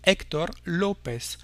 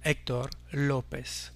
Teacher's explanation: Par exemple ici, on l'écrira avec des accents aigus sur le E et le O pour dire Héctor López, en portant l'accent tonique ici sur les premières syllabes, mais jamais sur les dernières